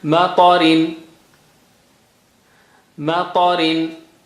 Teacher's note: Ta is high sounding, very thick and high sounding.